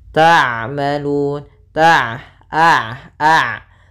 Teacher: Yaitu bainiah. Sifat bainiah ya di antara syiddah dan rakhawah.